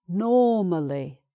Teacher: so that's an open vowel sound, no R.